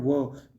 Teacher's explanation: व का उच्चारण स्थान है दंतोष्ठ